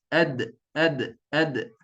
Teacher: Hujung lidah bertemu dengan pangkal gigi atas. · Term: qalqalah